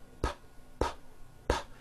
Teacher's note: your vocal cords are not producing a sound so therefore the P sound is what we call unvoiced because there is no voicing